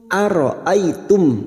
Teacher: Fathah bertemu ya sukun kita lunakkan ai.